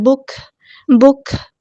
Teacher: آواز دھیمی ہو جائے گی، سانس جاری رہے گی